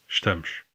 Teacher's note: In this word, you can hear the difference in the S sounds, sh in European Portuguese and s in Brazilian Portuguese. You can also hear the vowel reduction in the European word, with the first vowel basically dropped.